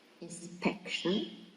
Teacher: it is stressed in the second syllable